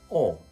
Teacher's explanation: for the british accent the lips are slightly rounded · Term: the lot vowel